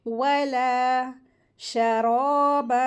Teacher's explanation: لام الف حمزہ ہے تو اس کو 2 حرکات کھینچیں گے